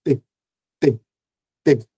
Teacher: O T ele é surdo, ele não vibra as cordas vocais.